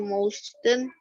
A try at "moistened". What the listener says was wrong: T-nya kedengeran. Jangan kedengeran bunyi T-nya. Nah, she moistened, bacanya moisten, T-nya silent.